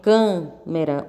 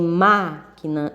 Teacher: em câmera o som representado pelo A é fechado. Em máquina ele é aberto. O som dos 2 acentos são diferentes, né?